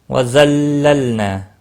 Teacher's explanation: ظا مستعلیہ ہے، پر پڑھا جائے گا، لام ساکن کو ہلانا نہیں۔ ظللنا الف مدہ ہے، ایک الف کے برابر کھینچ کر پڑھیں گے۔